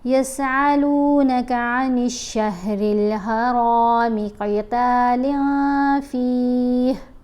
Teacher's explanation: یہاں پر را کو ہم نے موٹا پڑھنا ہے، قوف کو بھی موٹا پڑھنا ہے، قتال نہیں پڑھنا، کیونکہ لام کے نیچے دو زیر ہے نا، تنوین ہے، اور اس کے بعد ہے فا، تو فا حرف فا میں شامل ہے۔